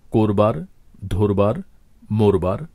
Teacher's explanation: এখানে চলিত ভাষার প্রতিটি শব্দের শুরুতে যে অটি রয়েছে প্রতিটি অকেই আমরা ও বা ওকারের মত উচ্চারণ করেছি